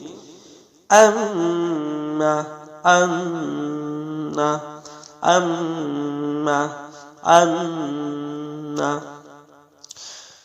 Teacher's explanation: 17 নম্বর মাখরাজ নাকের বাসি হইতে গুণ্য সহ উচ্চারিত হবে